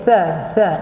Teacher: Sa jangan keluar angin sangat. Dia walaupun dia ada hams, tetapi jangan keluar banyak sangat.